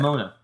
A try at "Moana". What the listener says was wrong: There's an A right in the middle.